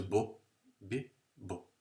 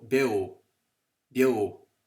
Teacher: it starts with a slender B, where the lips are flattened because it's slender B, as opposed to bo, B, bo.